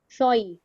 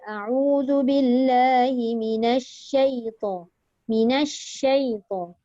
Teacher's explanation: Sebab fokusnya keluar shin itu dekat tengah lidah.